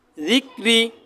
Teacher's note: ডাইনে যদি জের হয় র বারিক পাতলা করে পড়তে হবে জিকরি র সাকিন তার ডাইনে হরফ সাকিন তার ডাইনে যদি জের